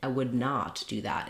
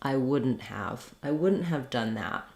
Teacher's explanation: Typically, though, not doesn't get any stress, and so what happens is we make it into the contraction wouldn't.